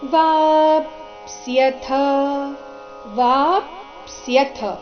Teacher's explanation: ಇಲ್ಲಿ ವಾ ದೀರ್ಘ ಆದ ನಂತರ ಅರ್ಧ ಪ ಇದೆ. ವಾಪ್ಸ್ಯಥ ವಾಪ್ಸ್ಯಥ ಸ್ಯಥ ಸ ಕೆ ಯ ದ್ವತ್ತಿದೆ.